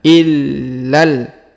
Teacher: huruf la di sini berharakat tasdid kita tahan dan tekan illal huruf la langsung sambung lagi ke huruf lam yang berharakat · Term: berharokat tasdid